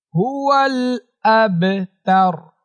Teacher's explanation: আব এমন একটু কলকলা করতে হবে, কারণ এখানে বা আসছে, বাটা কলকলার হরফ।